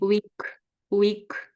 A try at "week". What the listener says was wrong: Week. I'll say you're in the middle when you're saying it. I can hear sort of elements of both of them when you're saying it. So this is something you need to be aware of, I think, for the moment.